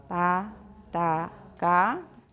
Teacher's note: produce voiceless unaspirated stops before vowels